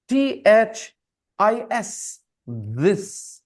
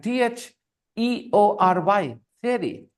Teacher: for example, THIS, this, right? A voice sound. And THEORY, theory, a voiceless sound.